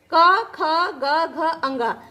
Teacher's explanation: ये कंठ से बोले जाते